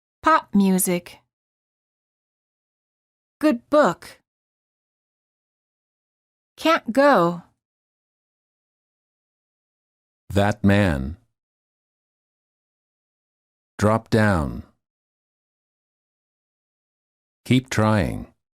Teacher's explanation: when a stop is followed by another consonant, do not release the stop. The release creates a puff of air and an extra syllable. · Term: Final stop followed by another consonant